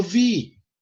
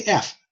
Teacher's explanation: It turned into a V. A V is a voiced F.